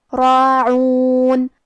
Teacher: کلمت راعون میں حرف را کی حرکت ہے زبر، تو ہمیں را کو تفخیم سے مطلب موٹی آواز میں پڑھنا ہے، اور کیونکہ اس پہ کھڑا زبر ہے تو یہاں مد الف ہے، اور مد الف اپنے پیچھے والے حرف کا حکم لیتا ہے تفخیم میں اور ترقیق میں، تو ہم را کو اور مد الف کو دونوں کو بھاری آواز میں پڑھیں گے